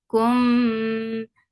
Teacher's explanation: This ikhfa shafawi has definitely, it has gunna. So keep the sound in your nose for a longer time.